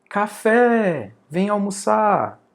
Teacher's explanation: Então, a sílaba mais forte é o fé. Síaba mais forte no final, né?